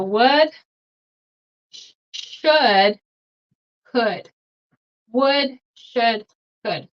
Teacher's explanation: the L is not pronounced